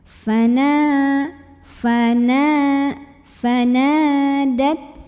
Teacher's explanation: Nah, di sini ada mad tabi'i karena ada alif yang didahului huruf yang barisnya fathah. Maka nun yang fathah kita panjangkan cukup 2 harokat saja ya. Jadi ini di ayun jangan kelebihan.